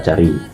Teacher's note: Untuk caranya sama, yaitu bagian tengah lidah dinaikkan ke langit-langit keras, tapi dia menghasilkan letupan udara yang tidak bersuara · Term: vokal C